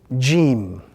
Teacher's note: This particular letter is pronounced when the middle of the tongue touches the upper palate in the mouth of the reader